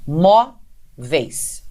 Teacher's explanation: a sílaba tônica não é a última, porque aí existe um ditongo, mas sim a penúltima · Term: paroxítona